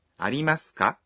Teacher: Consists of あります, there are, and か a particle that makes a sentence into a question. Remember, you say it with a rising intonation.